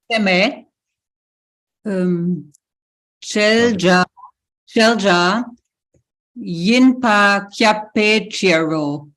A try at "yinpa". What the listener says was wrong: That sa suffix, you want to stretch it out just a little bit. It says yimpe.